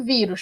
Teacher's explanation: É a palavra vírus, por exemplo, a gente tem a sílaba tônica, que é a penúltima, e essa palavra termina em US, por isso ela é acentuada, porque ela é uma paroxítona terminada em US, tá bom?